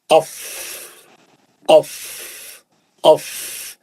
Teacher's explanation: नीचे का होंठ, ऊपर के 2 दांत उसके ऊपर बैठेंगे और फिर पीछे से हवा मारेंगे, हवा का प्रेशर रहेगा तो निकलेगा अफ अफ अफ।